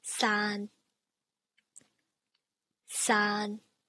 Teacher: the mid-level neutral, which is what I explained, which is basically medium pitch